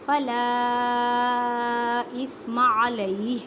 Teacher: الف مدہ کا قاعدہ کریں اور چھوٹی مدہ 4 الف کی مقدار میں کھینچ کر پڑھیں